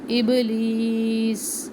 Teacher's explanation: ابلیس، اب با کے اوپر کلکلا، لی یا مدہ، سین سختی، ابلیس سیٹی کی آواز ہو آخر میں